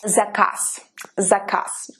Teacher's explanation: you see how the first z is very prominent in its voice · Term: voiced sound